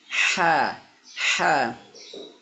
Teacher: Huruf ha makhrajnya adalah berada di tengah tenggorokan ya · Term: ha kecil